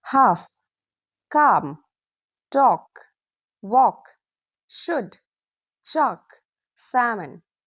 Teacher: Did you notice the L disappears in sound? Easy rule: if L comes after A or O, it's often silent. · Silent L usually comes after A, O, U. When L comes after these vowels, very often we don't pronounce it clearly.